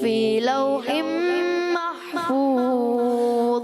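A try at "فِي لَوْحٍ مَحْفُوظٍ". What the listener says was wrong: اچھا آپ سے پھر غلطی ہوئی، محفوظ، محفوظ، ضاء میں کلکلہ نہیں کرنا ہے، اس چیز کا اپنے خاص خیال رکھنا ہے۔ بل هو قرآن مجید فی لوح محفوظ،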